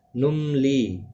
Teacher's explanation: میم ساکن کے بعد لام آیا ہے، اظہار شفوی ہوگا. لی یا مدہ ہے، ایک الف کی مقدار کے برابر کھینچ کر پڑھیں گے.